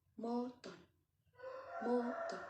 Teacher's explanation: in Thailand accent, people change the letter R into the letter N.